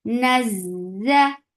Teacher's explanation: You naz for fatha upon jaws attached. Za will get sifa of rakhawa and it has safir.